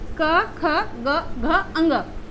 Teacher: क वर्ग का उच्चारण हम लोग करते हैं कंठ से